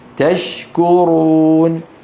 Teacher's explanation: الشين من وسط اللسان، الكاف من أقصى اللسان، وحكمهما الإظهار في كل القراءات.